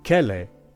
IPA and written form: kele (kele)